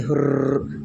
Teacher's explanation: हुर्र एक ऐसा शब्द है जिसमें हमारी जीभ जो होती है कई बार कंपन करती है। ठीक है, तो इसे हम प्रकंपित व्यंजन कहते हैं। · र एक ऐसा व्यंजन है जिसे बोलने में हमारी जीभ जो है 2-3 बार कंपित होती है।